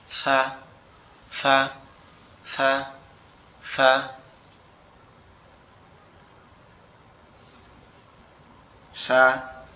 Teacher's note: সা অক্ষর হচ্ছে আমাদের জিহ্বার আগা, সামনের উপরের দুই দাঁতের আগের সঙ্গে লাগায়া উচ্চারণ করতে হবে